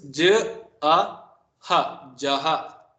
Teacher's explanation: the visarga is pronounced with the h and the closest relative of the vowel preceding it. For example, ja and the two dots means ja with the visarga, ja with a, the swara a, and then with the visarga is pronounced as j a ha, j a, then we use ha.